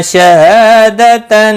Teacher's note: ہا الف مدہ ہے، ایک الف کے برابر کھینچ کر پڑھیں گے۔